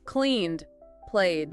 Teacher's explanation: if the base verb ends in a voiced sound where your throat vibrates, like the N in clean or the vowel in play, it sounds like a soft D.